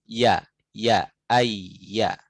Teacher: min wasatil lisan, dari tengah lidah, ma'a wasatil hanakil a'la, disertai beserta tengahnya langit-langit yang atas.